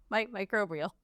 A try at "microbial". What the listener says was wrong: You're adding an R.